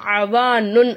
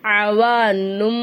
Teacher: தன்வீனுடைய குறியீடு நம்ம என்ன செய்யணும் மீமா மாத்தி உச்சரிக்கணும் அவானுன் அப்படின்னு சொல்லாம அவானும் அப்படின்னு சொல்லணும் [இசை] அவானும் அப்படின்னு நம்ம என்ன